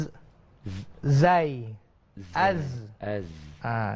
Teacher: Tapi huruf zai lidah kita di dalam, bukannya di luar. Dan dia ada desiran dinamakan sebagai safir. Desiran, satu desiran.